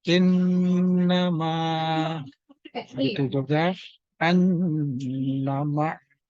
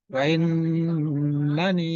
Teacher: nun bertasdid, ini ciri gunnah musyaddadah. Baca dengan ditahan harokat.